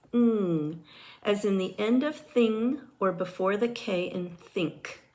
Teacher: The sound for N is N, as in the beginning of nurse and the end of ran. Ing is a voiced velar nasal consonant.